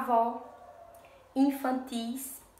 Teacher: Vejam, percebam que a última sílaba é a mais forte, tá? Então, por isso, ela é classificada como oxítona, tá?